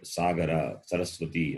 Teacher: the tongue touches the base of the upper teeth therefore dental